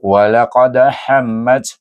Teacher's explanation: Dia menurun bunyinya tetapi tidak sampai ke taraf sughra